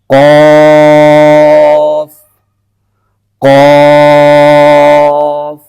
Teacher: اس سے اگلا جو مخرج ہے وہ ہے زبان کی جڑ اور تالو کا نرم حصہ۔ زبان کی جڑ اور تالو کا نرم حصہ، یہاں سے ایک حرف ادا ہوتا ہے، نقطے والا قاف۔